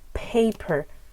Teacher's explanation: there's an extra puff of air